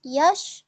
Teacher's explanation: Dia dibaca dengan jelas yash, maka hukumnya adalah izhar.